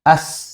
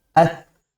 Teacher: Nah, ini tu pakai ta bukan pakai sin. Kalau sin itu desisnya lebih terdengar. Kalau ini agak ketahan karena memang kan ujung lidah menempel dengan gigi seri atas yaitu huruf ta.